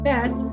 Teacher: the height of the tongue is in the middle of mid and low. The word bed is almost pronounced in the central area of the tongue and using low tongue.